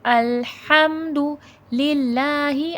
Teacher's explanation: اللہ لفظ سے پہلے زیر ہے، اللہ لفظ باریک پڑھا جائے گا، موٹا نہیں کیا جائے گا